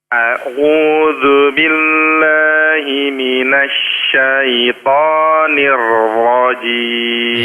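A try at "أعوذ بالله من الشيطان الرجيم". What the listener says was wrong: Ya, roknya sudah cukup tebal. Sekali lagi Pak. Ainnya diperhalus lagi.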